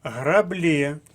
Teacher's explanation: граблі наголос на останньому складі